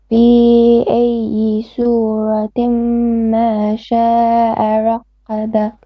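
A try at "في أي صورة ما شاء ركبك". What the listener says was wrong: Now, okay, you're saying qa with the kaf here. It's rakka, not rakka. And then also ma sha will have 4 or 5 beats of mad here. This is mad al muttasil.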